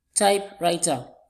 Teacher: Because these are compound words. And so they have their stress syllable on the first word.